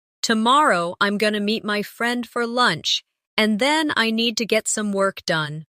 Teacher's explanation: Stress tomorrow meet friend lunch and work. The other words should be softer and faster. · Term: natural rhythm of English